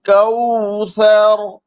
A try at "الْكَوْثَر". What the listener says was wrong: मोटा करे रा को, कौसर। कलकला नहीं होना चाहिए, मोटा हो लेकिन कलकला नहीं। जी, जबान की जड़ ऊपर की तरफ उठानी है ना।